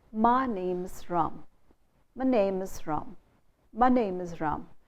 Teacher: Name and Ram is the stressed syllable. You don't stress my name is Ram, because then you'd be stressing the pronoun.